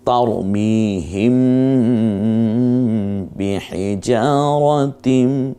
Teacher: মিম সাকিনের পরে যদি বা আসে তখন গুন্না করে পড়তে হয়